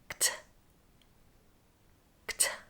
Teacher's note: of the tongue is quickly lowered without causing an explosion and finally the tongue tip is lowered and air explodes out completely